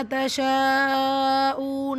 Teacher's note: தஷாஊன மத்தை தொடர்ந்து ஒரே வார்த்தையில் இடம்பெறக்கூடிய ஹம்சா மத்துல் முத்தசில் 5 ஹரக்கத் அளவு நீட்டம் கொடுத்து ஓதணும்.